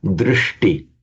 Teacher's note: wherever you get a sh followed by a ta, they both automatically become retroflex